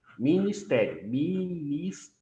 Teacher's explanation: a penúltima sílaba é a tônica é a penúltima sílaba tônica então é uma paroxítona